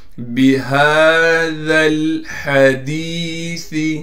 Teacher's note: بِهَذَا الْحَدِيثِ، ہا پر کڑا زبر ہونے کی وجہ سے ہا کو ایک الف کی مقدار کھینچیں گے، ذال کو باریک کر کے پڑھیں گے، پھر ذال کو لام سے ملا دیں گے اس لیے کہ لام ساکن ہے، اور ہا کو صاف کر کے گلے سے نکالیں گے، گلے کا وہ حصہ جو منہ کی جانب ہے۔ دال کے بعد یا ساکن ہے، دال کو یا سے ملا دیں گے اور دال کو ایک الف کی مقدار کھینچیں گے اس لیے کہ دال کے بعد یا مدہ ہے۔